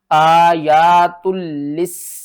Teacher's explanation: سین کے اوپر سختی کریں گے، سین کو 2 بار پڑھیں گے، لام کے اوپر سختی کریں گے، لام کو 2 بار پڑھیں گے۔ آگے دیکھیں مد متصل ہے، اس کو 5 الف کے برابر کھینچ کر پڑھیں گے